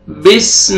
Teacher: اقرأ باسم، بسم میں سین کو آپ نے ہلانا نہیں ہے، سین کا ساؤنڈ آنا چاہیے، ثا میں آپ کا ساؤنڈ مکس نہیں ہونا چاہیے